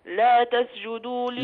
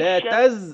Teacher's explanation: بقت السين زاي، ما ينفعش